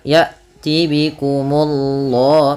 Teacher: Kemudian Allahnya tebal, ya'ti bikumullah, munya tipis baru Allahnya tebal